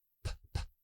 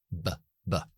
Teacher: Por ejemplo, la P y la B, la diferencia que es la P es sordo o sorda y la B es un sonido sonoro. Es decir, desactivo la voz, p, p, activo la voz, b, b. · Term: bilabiales